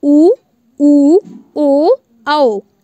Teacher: तो आपको ऐसे याद करना है कि इनको बोलते समय जो मुंह है वो उसमें वृत्त का आकार बन रहा है, मतलब जो ओंठ है उनमें आपका वृत्त या राउंड राउंड आपका शेप बन रहा है, इसलिए ये आपके वृत्ताकार स्वर होंगे।